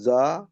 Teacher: জাল আলিফ জাবর যা, একে আলিম মাদ্দা এক আলিফ পরিমাণ টান দিয়ে পড়তে হবে